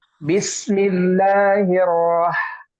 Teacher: Roh di sini tidak boleh memantul ya, karena huruf H ini bukan qalqalah ya. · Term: mengalir